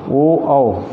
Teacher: और एक है कंठ और ओष्ठ, ओ दैतोह कंठोष्ठम, ओ दैतोह कंठोष्ठम, ओ औ, ये दो वर्ण ऐसे हैं जिनके उच्चारण स्थान में कंठ और ओष्ठ दोनों सहायक हैं